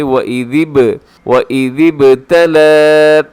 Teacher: یہاں با قلقلہ ہوگا، یعنی با کی آواز کو اپنے ڈبل کرنا ہے